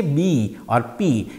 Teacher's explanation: when we say b or P it happens by obstructing the air flow by closing the lips